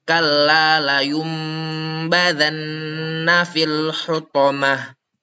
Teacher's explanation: mim sukun dan berdengung selama dua harakat beserta menyamarkan mim tersebut.